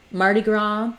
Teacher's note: In Mardi Gras, we have the main stress on the gras syllable